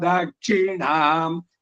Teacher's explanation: ಎಲ್ಲ ಕಡೆನೂ ದಕ್ಷಿಣೆ ಅಲ್ಪ ಪ್ರಾಣಗಳಿದು, ಮಹಾಪ್ರಾಣ ಬರಬಾರದು